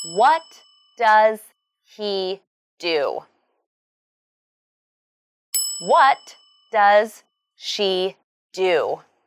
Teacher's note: what and do are the key words in this question so they should be emphasized and your voice should go down at the end